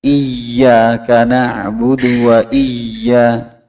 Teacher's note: Ya, ini kesalahan yang sering terjadi, yaitu terlalu mentasdidkan ya sampai berbunyi ada seperti kayak zain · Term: terlalu tasdid